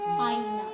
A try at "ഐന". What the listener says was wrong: ആ ഐന ആ അല്ല ആ എഴുതും പക്ഷെ അവിടെ ഐ ഉച്ചാരണം വരുന്നു ഐ പിന്നെന്തുവാ പിന്നെ ആ വരുന്ന ഡയറക്റ്റ് ആ ഉച്ചാരണം വരുന്ന